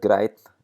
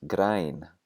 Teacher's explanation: we lose the voiceless N at the end, and we also lengthen the vowel.